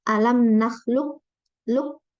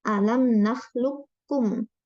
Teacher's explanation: Qafnya langsung diidghamkan ke kaf tanpa tersisa. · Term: idgham kamil